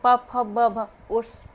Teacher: ओष्ठ भी आपके स्पर्श हो रहे हैं, तो ये ओष्ठ वर्ग के हो गए